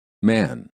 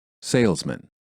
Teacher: vowel sounds depending on whether the syllable is stressed or reduced the first word of the pair has only one syllable so the vowel must be fully pronounced the second word has two syllables with the second syllable reduced